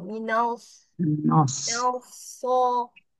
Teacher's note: Ia tebal sod bukan daripada muncung tapi daripada pangkal lidahnya.